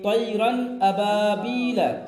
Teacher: تنوین اور نون ساکن کی آواز کو ظاہر کر کے بغیر غنہ کے پڑھنا ہے · ہم نے تنوین کی آواز کو ظاہر کر دیا، نون ساکن کی آواز کو بھی ظاہر کر دیا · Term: اظہار